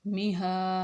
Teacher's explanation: چھوٹا ہا ہے تو ہم اس کو سینے سے ادا کریں گے، نہ کہ حلق سے